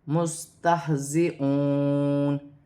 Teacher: یہاں بھی نون مشدد میں غنہ کیا جائے گا اور الف مدہ بھی ہے۔ ہا حرف حلقی میں سے ہے، حلق سے ادا کیا جائے گا۔ مستہزئون، ہا بھی ساکن ہے، میم سین بھی ساکن ہے، دونوں کو اپنے سے پہلے حرف کی حرکت کے ساتھ ملا کے پڑھا جائے گا۔